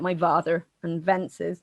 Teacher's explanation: he says vences which is another very southwestern feature that you would say vox instead of fox